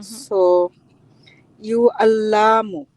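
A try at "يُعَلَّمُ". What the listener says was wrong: Yu'allamu. Very good.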